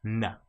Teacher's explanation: With N, it's touching our mouth at the front, the roof of our mouth